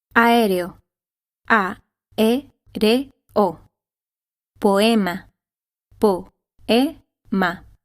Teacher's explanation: In Spanish, when a, e, or o are next to each other, they do not form a diphthong and instead belong to two separate syllables